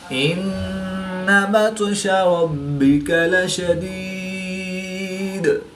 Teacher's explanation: نون شدید میں ہمیشہ غنہ ہوتا ہے تو یہاں پر غنہ آنی کر کے پڑھیں گے۔ طاء حروف قلقلہ میں سے ہے اور یہ ساکن ہے تو یہاں پر قلقلہ صغریٰ کر کے پڑھیں گے۔ با بھی حروف قلقلہ میں سے ہے اور یہ مشدد ہے تو یہاں پر ہم قلقلہ کبریٰ کر کے پڑھیں گے۔